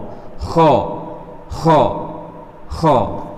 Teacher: ho ini termasuk huruf yang tebal sehingga bacaannya kayak o gitu · Cara pengucapannya keluar dari tenggorokan bagian atas dan suaranya agak kasar